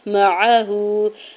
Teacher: واؤ ساکن سے پہلے نون کے اوپر پیش ہے، واؤ مدہ ہو رہا ہے، دو حرکت کھینچ کے ادا کریں گے۔ معہو، میم کے زبر کو، عین کے زبر کو بغیر کھینچے ہوئے ادا کرنا ہے، ہا کے اوپر الٹا پیش ہے، دو حرکت کھینچ کے ادا کریں گے۔